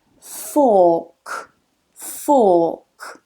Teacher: make sure you get that vowel length a little bit longer